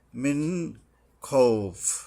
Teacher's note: এখানে নুন পুরাটা নুন উচ্চারণ করতে হবে স্পষ্টভাবে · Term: ইজহার